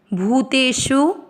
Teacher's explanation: बड़ी मात्रा भूतेषु श षटकोण पर थोड़ा सा जोर देना है उ की मात्रा छोटी है तो लंबा नहीं खींच